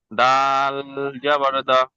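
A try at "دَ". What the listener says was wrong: যেমন ডাল জাবার দা নয়, যেমন বলে এটি কি বলবেন, জা দা। আপনি ইজা করলেন, আলিফ মাদ্দা এক আলিফ পরিমাণ টান দিয়ে করতে হয়, হারাকাত টান না দিয়ে তাড়াতাড়ি করতে হয়।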